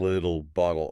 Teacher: the T stops sounding like a sharp T. Instead, it becomes this very quick, very soft D sound.